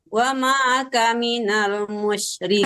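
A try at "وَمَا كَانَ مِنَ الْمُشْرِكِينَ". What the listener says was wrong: Kananya panjang, Bu.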